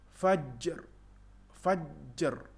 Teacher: Jadi ada qalqalah dan ada getaran sedikit untuk memberi hak kepada huruf ra.